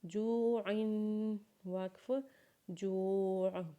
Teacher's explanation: عین کے نیچے جب تنوین پڑھیں گے، دو زیر پڑھیں گے تو غنہ کریں گے، جیسے جوعن، وقف جوع۔